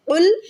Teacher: قاف یہاں پر موٹا ہے، قاف دو نقطوں والا، اسے ہمیشہ حلق سے نکالیں گے۔